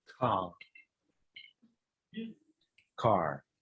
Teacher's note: В британском варианте эта буква вообще, этот звук вообще не слышно нам.